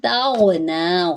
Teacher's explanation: تاغنا, غین پور ہے, نون کے اوپر کھڑا زبر ہے, ایک الف کے برابر لمبا کریں گے